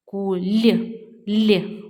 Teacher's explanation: чуємо що літера л у нас пом'якшена